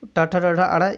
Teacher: इनकी बात करें तो ये मूर्धा से बोले जाते हैं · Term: ट वर्ग